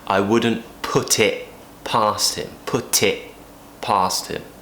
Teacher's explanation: We can drop the T at the end of it if we want to.